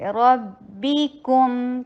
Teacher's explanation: سختی کے ساتھ ہوگا کیونکہ باس شدید حروف میں سے، ربکم، کاف کے اوپر ضمہ، ہونٹوں کو گول کیجیے، میم کے اوپر آتے ہی ہونٹ اپنی نارمل پوزیشن پہ